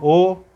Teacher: तो ओठों का आकार कैसा हो रहा है, गोल हो रहा है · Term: वृत्ताकार स्वर